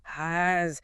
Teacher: Finally, add a buzzing Z right behind your teeth. Hazz. You can literally feel how your anatomy takes invisible breath from your lungs and turns it into a vibrating kinetic energy right in your mouth.